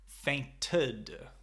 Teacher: We pronounce both the E and the D.